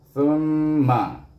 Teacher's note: Sa baris depan su, tetapi ditasydid dengan huruf mim. Mim bertasydid kena baca dengan wajib, wajib digunakan dengan dengung dua harakah